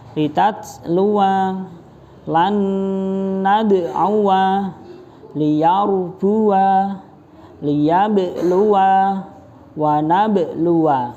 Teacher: Ada tulisannya alif tapi ketika diucapkan tidak ada alifnya, tidak dibaca panjang.